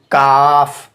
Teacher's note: क़ाफ़ की जगह से ज़रा मुंह की जानिब हटकर इससे काफ़ अदा होता है। यानी जहाँ से हम क़ाफ़ अदा कर रहे हैं उससे थोड़ा मुंह की जानिब हटकर हम अगर इसको अदा करेंगे तो काफ़ अदा होगा।